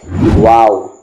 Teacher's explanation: آپ کے جو ہونٹ ہیں وہ بالکل راؤنڈ ہو جائیں گے، راؤنڈ شیپ میں آئیں گے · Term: واو کا مخرج